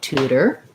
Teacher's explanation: for tutor we have first syllable stress tense ooh tutor tutor we use a flap here sounds more like a d and here's one of our ors that says er so tudor